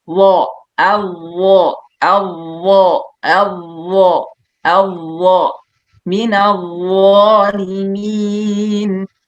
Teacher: Ini harfu isti'la huruf la yang mempunyai sifat isti'la, makanya tebal. Dan ingat isti'la lagi-lagi jangan kita majukan mulut ya, misalkan minal zalimin atau gelembung biasanya nih teman-teman ya, banyak minal la gimana ya.